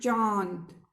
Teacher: अनुनासिक स्वर जिसमें वायु मुख प्लस नाक, यानी मुख और नाक दोनों से निकलती है